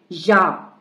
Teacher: جب یا کو ہم ادا کرتے ہیں تو زبان کا درمیانی حصہ اوپر کو اٹھتا ہے مگر اوپر تالو سے نہیں ملتا بلکہ صرف اوپر اٹھتا ہے اور ہم یا کو جلدی سے پڑھتے ہیں اور نرمی سے پڑھتے ہیں.